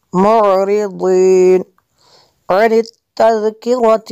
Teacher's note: ذال کو جو ہے نرم کرنا ہے، باریک بھی کرنا ہے اور نرم بھی اس کو کرنا ہے